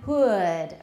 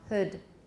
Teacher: In American, hood. Very clear diphthongal character. British, no diphthong.